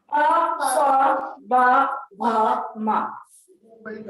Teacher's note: अगला है पवर। पवर में इनको कहते हैं ओष्ठ वर्ण, यानी इनके उच्चारण में आपके दोनों ओठों का स्पर्श होता है।